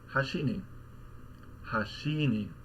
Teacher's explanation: So you say like hashini, hashini, right, where you peak at the end of the word and you drop back down on the particle. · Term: accented on the last mora